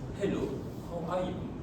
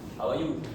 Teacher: it is usually a flat intonation, less rise and fall